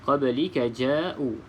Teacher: Huruf ba salah satu daripada huruf qalqalah yang 5, maka kita baca dengan lantunan sedikit, qalqalah sughra.